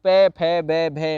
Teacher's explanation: पूरा का पूरा पे वर्ग जो होता है वो ओष्ठ की कैटेगरी में जाता है, होठों वाली कंडीशन पे जाता है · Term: ओष्ठ ध्वनि